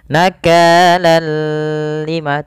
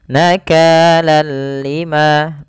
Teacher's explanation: kita membacanya hanya idgam saja tanpa disertai dengan ghunah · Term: idgham bila ghunah, idgham bila gunnah